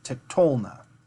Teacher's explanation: We're not trying to rush 2 full syllables before an accent. We're going to go ahead and accent it in the middle so that we can take a little bit of stress off the end. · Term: accent shift